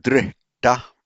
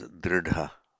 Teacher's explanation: The h plus t becomes a dh. That's where you get drita becomes dridha.